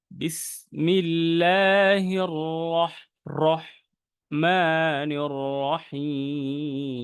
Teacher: বিসমিল্লাহ দুইটার শেষে আপনি একটু লেন্দি করার চেষ্টা করবেন টানটা একটু বেশি দেওয়ার চেষ্টা করবেন যেটা তিন আলিফ আপনি যদি বেশি দেন কোন সমস্যা নাই কিন্তু তিন আলিফের কমে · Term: আরজি সাকিন